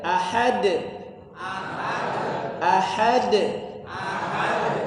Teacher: h-nya tipis kemudian Qalqalah Kubro dipantulkan